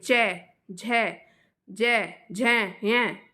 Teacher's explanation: ये आपके तालू से आती है